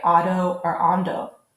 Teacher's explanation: Spaniards frequently drop the D at the end of the word